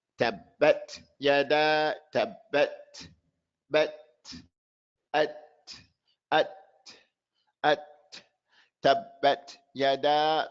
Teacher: But you do hear the air on the second ta, which has a sukoon.